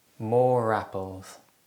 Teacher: if the next word starts with a vowel in this case the r sound is inserted for example more more apples this is known as the linking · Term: linking R